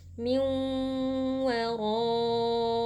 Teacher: Min ada nun sukun berjumpa dengan huruf waw, hukumnya adalah idgham bi gunnah. Jadi nun sukun kita masukkan ke dalam waw disertai dengan dengung yang dipanjangkan. Min waraihim.